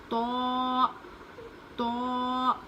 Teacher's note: تو کو منہ بھر کے پڑھیں گے، موٹا پڑھیں گے